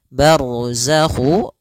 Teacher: ra tebal karena ada huruf ra yang sukun didahului dengan fathah